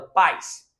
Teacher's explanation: o A forte e o I praticamente nem aparece